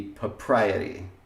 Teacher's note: the R got kept when there was stress, and then it got dropped in the syllable that didn't have stress